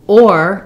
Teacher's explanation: Or, if I'm stressing on it, like I just did there, if or has length and stress, it keeps and maintains its true diphthong.